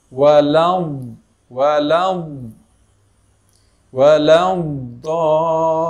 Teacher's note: Kita tekan tepi lidah ke gigi geraham, kemudian kita tolak ke depan, kemudian seperti ada angin yang tertahan. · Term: istitalah